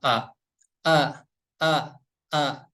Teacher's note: untuk huruf hamzah tempat keluarnya dari pangkal tenggorokan